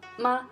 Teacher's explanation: It's close to the first tone, but it's much softer. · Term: neutral tone